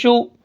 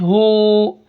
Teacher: ٹھیک ہے، اب یہاں پر دیکھیں شین پیشو، اس کو نہیں کھینچنا، ہا واو پیش ہو، اس کو ہم کھینچ رہے ہیں کیونکہ واو ساکن ہے، اس سے پہلے پیش ہے، تو یہ واو مدہ ہو گیا